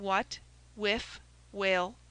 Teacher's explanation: When wh begins a word, the aspirate H precedes W in pronunciation as in what, whiff, whale, pronounced what, whiff, whale.